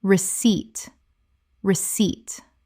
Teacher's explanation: The p is completely silent. Two syllables with the stress on the second.